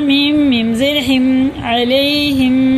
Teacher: मीम साकिन के बाद क्या आ रहा है? मीम आ रहा है। तो ये है इदगामी मीम, गुन्ना करके पढ़ेंगे।